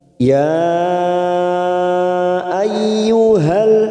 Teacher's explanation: Hamzahnya seperti berada dalam satu kata dengan ya, maka disebut mad jaiz munfasil hukmi. 4 harokat kita panjangkan.